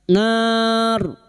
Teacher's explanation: bertemunya mad dengan huruf hidup yang dibaca waqaf mad arid li sukun 4 harokat kita panjangkan. Dan huruf ro yang didahului fathah dan dibaca waqaf maka ro kita baca tafkim, nar.